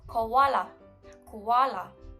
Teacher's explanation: This is a wrong pronunciation because the right one is koala, koala, not kawala. The second vowel of this word should be stressed on instead of the first one.